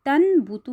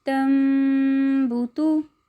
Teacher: اس کو پڑھنے کا طریقہ یہ ہوگا کہ نون ساکن اور تنوین کو میم سے بدل کر پڑھیں گے اور غنہ کریں گے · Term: اقلاب